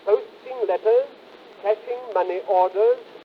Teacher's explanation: how the greater part of the final rise is correctly placed in the second, unstressed syllable of orders